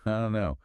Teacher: Well, we already touched on, I don't know, becoming, I don't know. That reduction of the vowel sound and dropping the final T is incredibly common for don't in many contexts.